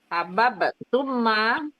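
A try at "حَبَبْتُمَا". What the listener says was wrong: Bukan tumma, Bu. Nggak pakai tasdid. Tuma.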